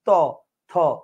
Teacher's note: জিহ্বার আগা দাঁতের আগায় লাগবে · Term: অগ্রদন্তমূলীয় বর্ণ